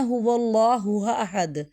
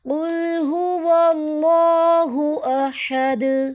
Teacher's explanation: حمزہ کو سختی سے ادائیگی، ہا کو ہم نے حلق سے نکالنا